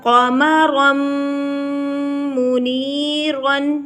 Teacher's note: تنوین کے بعد میم آ گیا، یہاں پر ادغام مع الغنّہ ہوگا